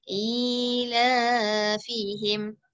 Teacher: Jadi i baca panjang, la pun baca panjang.